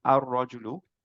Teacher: র টাকে মার্চ করে ফেলেছি লামটা বাদ দিয়ে দিয়েছি র টাকে দুইবার পড়লাম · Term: ইদগাম